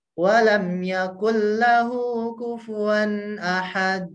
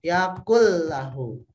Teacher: Jadi nunnya hilang. Ini namanya idgham, dilebur atau ditiadakan bunyi nunnya. Dilebur ke huruf L. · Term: idgham bila gunnah